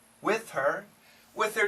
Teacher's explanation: the faster we say it we can cancel the h